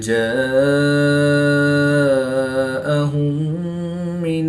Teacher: الف مدہ کے بعد حمزہ اسی کلمے میں ہے تو یہاں پر مد متصل ہوگی، 3 سے 5 الف تک کھینچ کر پڑھیں گے۔ میم ساکن کے بعد دوسری میم ہے تو یہاں پر ادغام شفوی ہوگا یعنی غنہ کر کے پڑھیں گے۔